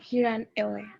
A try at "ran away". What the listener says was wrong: রান না, উচ্চারণটা হবে রেন এওয়ে। রান বলে আর ইউ এন রান হয়ে যাবে, রান রেন তারপরে আবার রান, ঠিক আছে?